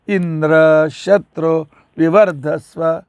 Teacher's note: ಆದರೆ ಅವನು ಅಂದದ್ದು ಇಂದ್ರ ಶತ್ರು ವಿವರ್ಧಸ್ವ. ಇಂದ್ರಕ್ಕೆ ಉದಾತ್ತ ಕೊಟ್ಟ, ಶಕ್ಕೆ ಅನುದಾತ್ತ ಕೊಟ್ಟ